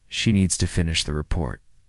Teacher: Stress needs and report and let the small words fall quietly. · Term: rhythm